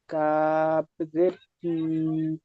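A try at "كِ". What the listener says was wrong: কি বলে টান হবে না, জের হারাকাতে টান হয় না। কাফ জের কি, কি জলদি।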